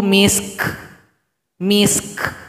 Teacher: sukunkan huruf Kaf berikan bunyi Hamas